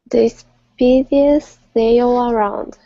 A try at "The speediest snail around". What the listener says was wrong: There you go. Good.